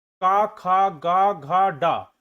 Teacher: क वर्ण वर्ग में आएगा क ख ग घ ड और यह कंठ से बोला जाता है